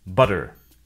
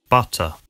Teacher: In the US, they sometimes sound like D, an alveolar tap instead of T, an alveolar stop.